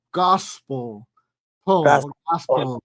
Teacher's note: Es una O que suena como un poquito como A.